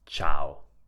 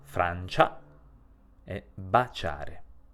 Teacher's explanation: Se a questa combinazione aggiungiamo un'altra vocale ad esempio una a otteniamo una sillaba dove la i non si pronuncia e la C si pronuncia in modo debole con il suono debole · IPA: [t͡ʃ]